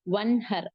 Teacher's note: அந்த 6 லெட்டர் வந்துச்சு அப்படின்னா குன்னா இல்லாமல் நூனின் சத்தத்தை வெளிப்படுத்தி ஓத வேண்டும் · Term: இஸ்ஹார்